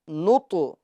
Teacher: طا میں ہم قلقلہ کریں گے کیونکہ یہ حروف قلقلہ میں سے ہیں